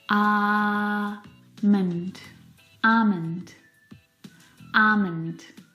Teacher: Now, in this word, the L is silent.